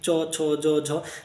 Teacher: শক্ত তালুতে যখন সমানভাবে বাড়ি খাচ্ছে তখন সেটা হচ্ছে তালব্য ধ্বনি